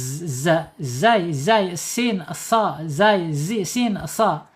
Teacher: Di sini zai yang saya sampaikan tadi ya. Zai di sini secara makhraj ada di alisan ya. Jadi ujung lidahnya menyentuh gigi seri yang bawah ya.